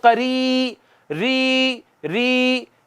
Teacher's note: منہ کے خالی حصے سے یا ادا ہوگی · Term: حروف مدہ